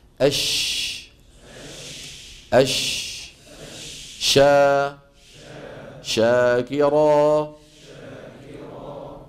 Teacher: ادى ان الصوت جزء منه اصطدم وارتد ورجع لورا الى الفم هو انتشار صوت الشين من مخرجه حتى يصطدم بالصفحه الداخليه للاسنان العليا والسفلى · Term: تفشي